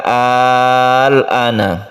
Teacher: Kita membacanya 3 alif, kemudian kita sukun ke lam. Inilah yang disebut dengan mad lazim mukhaffaf kilmi.